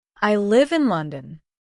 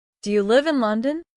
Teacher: This simple pattern falling for statements rising for yes/ no questions is one of the foundations of English inonation.